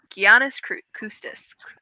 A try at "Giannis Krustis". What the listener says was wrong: Yeah, there should be an R. There's an R. There's an R.